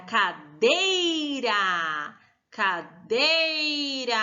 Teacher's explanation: É o dei, muito bem. O dei nós falamos com mais força. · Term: sílaba tônica